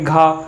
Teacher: देखिए खा में भी हा की हकार आ रही है, जबकि घा में भी हा की, घा एक बार प्रोनाउंस करके देखेंगे घा, तो हा आ रहा है पीछे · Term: महाप्राण